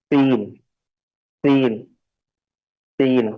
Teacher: तो यह सीन की अदागी के वक्त हम जुबान का अगला हिस्सा उसको आगे की तरफ लाएंगे और बड़े ही बारीक अंदाज में हवा को निकाला जाता है या इसको कह सकते हैं कि सीन को सीटी की आवाज देनी रहती है